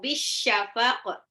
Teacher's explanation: Itu alif lam samsiah, alif lamnya tidak dibaca, tapi langsung lebur ke shin